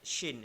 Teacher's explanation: Lisan naik ke Langit. ke langit-langit. Shin. Jadi berangin.